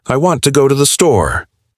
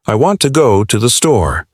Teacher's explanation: the words I want to and the are said very quickly and the main stress is on go and store.